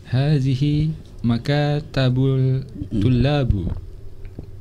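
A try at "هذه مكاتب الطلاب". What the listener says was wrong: Maktab itu bentuk jamaknya makatib. Ya, bukan makatab, nggak ada. Makatib. Kita sudah pernah belajar alif lam syamsiyah, alif lam qamariyah. Ini masih makatibul aja ini ya. Hadhihi makatibut tullabi.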